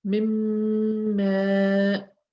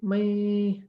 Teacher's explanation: Because it has shadda, the gunna will be slightly longer. Mimma. But here it's again shadda, so I'll say may'mal, so I'll prolong it a little bit more.